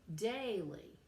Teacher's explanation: so we have two syllables but the stress is on the first one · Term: trochaic